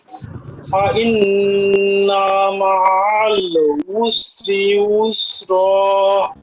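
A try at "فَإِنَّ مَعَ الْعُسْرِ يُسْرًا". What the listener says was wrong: ফাইন না নুনে একটু টান হয়ে গেছিল মনে হয় জি আবার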